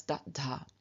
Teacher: The a, the vowel, was reduplicated, but as its short counterpart. And so the reduplicative syllable is da, which is added to the beginning of dha, giving us da, dha.